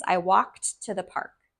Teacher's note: the ending of walked is a D, but it sounds like a T.